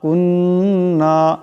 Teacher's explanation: এখানে এক আলিফ পরিমাণ নুন মুশাদ্দাদের গুন্না হবে।